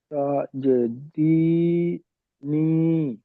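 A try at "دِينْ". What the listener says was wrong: দিন, দিনই হবে কেন, নুনটা জুড়ে দেন, দিন। এই তিনটে তো সাকিন ভালো করে দেখেন আরেকবার, এই তিনটে সাকিন করতে হবে, আপনি প্রথম দুটো দি পড়ে নিলেন, ওই দির শেষে নুনটাকে জুড়ে দেন।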